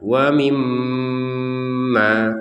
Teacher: Ma-nya juga 2 harokat karena ada fathah bertemu alif.